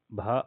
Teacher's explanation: ओष भी है महाप्राण भी है और घोष है